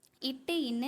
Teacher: நாவின் நுனி அன்னத்தின் நுனியை தொடர்றதாலையும்